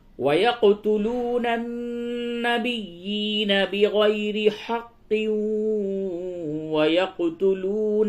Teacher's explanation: تنوین کے بعد واو حروف یرملون میں سے آیا، یہاں پہ ادغام مع الغنہ ہوگا